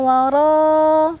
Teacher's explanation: ra dibaca secara tafkhim karena berbaris di atas fathah jadi ditebalkan